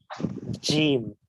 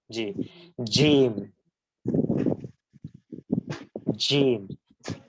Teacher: জিমের মাখরাজ হচ্ছে জিওভার মধ্যভাগ তার বরাবর উপরের তালুর সাথে লাগিয়ে জিম এটা শক্ত এবং একটু মজবুত ভাবে আওয়াজ হবে